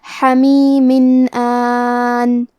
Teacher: الف حروف الاظہار میں سے ہے، اور اظہار کا معنی ہے ظاہر کرنا، اور کیونکہ تنوین کی اصلیت نون ساکن ہے تو ہم یہاں تنوین ظاہر کریں گے اور اسے نون ساکن پڑھیں گے اور بغیر غنہ سے یہ حکم کو ادا کریں گے · کلمت حمیم میں حرف الحا کی ادائیگی حلق کے درمیان والے حصے سے ہے، آخری میں میم کے نیچے تنوین زیر ہے.